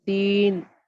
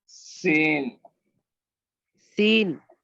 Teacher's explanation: سین کی دونوں دانت سے دانت ملائیں گے، زبان نہیں لائیں گے بیچ میں